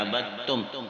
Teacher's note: تو اسی طرح کبھی ایسا ہوتا ہے کہ ساکن کو ہم چھوڑ دیتے ہیں، تو یہاں پر ہم ساکن لیٹر دال کو نہیں پڑھ رہے۔ جب ہم رواں میں پڑھیں گے تو دال کی آواز نہیں آئے گی۔ عبدتم با کو ڈائریکٹ تا سے ملا رہے ہیں، عبدتم۔